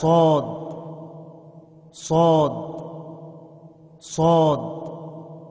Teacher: نوک زبان اوپر نیچے کے دانتوں سے مل کر صاد ادا ہوتا ہے